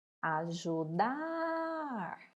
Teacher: Qual que nós pronunciamos por mais tempo? O dar.